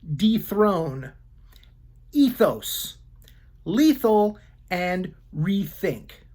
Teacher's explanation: sometimes the letters eth together sound like the long e e followed by a soft th sound